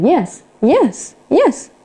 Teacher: nếu như mình dùng lại là low rising, tức là giọng lên cao, hoặc là high rising, thì câu này dùng để khi mình nói câu hỏi